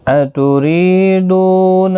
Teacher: ری یا مدہ ہے، ایک الف کی مقدار کے برابر کھینچ کر پڑھیں گے